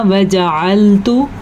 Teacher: अगर इसको गलत पढ़ा जाए तो हम पढ़ेंगे वजअल्तु, तो मीनिंग इसका बिल्कुल गलत हो जाएगा, क्योंकि आइन और हमज़ा के फ़र्क से मतलब गलत हो जाता है। ता को लंबा नहीं करना